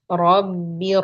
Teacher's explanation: Ra-nya tebalkan. Ra sukun.